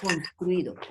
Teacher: En una sola sílaba hay 2 vocales seguidas. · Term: Dictongo